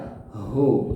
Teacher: Tapi yang tepat hu itu h besar ya. Huwallah di sini di pangkal tenggorokan keluarnya di tebal, bacaannya besar hu ya, seperti itu.